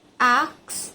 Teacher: So there is example from the story number one ax instead of ask the s and c sounds are switched resulting in ax. This is a classic example of metatasis as an order of the consonants is reversed. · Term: metasis